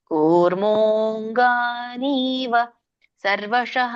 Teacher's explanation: ಅಲ್ಲಿ ಅವಗ್ರಹ ಇದೆಯಲ್ಲ ಹಾಗಾಗಿ ಕೂರ್ಮೋ ಅನ್ನೋದು ಎಳಿಬೇಕು ಎಳೆದಾಗ ನಿಮಗೆ ಗ ಅನು ಸರಿಯಾಗಿ ಕೂಡುತ್ತೆ ಕೂರ್ಮೋಂಗನೀವ ಸರ್ವಶಹ ಈಗ ಎಷ್ಟು ನೀವು